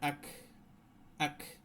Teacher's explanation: এই কাফে করতে হয় একটু বাতাস মানে লিক করে দিতে হয় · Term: হামস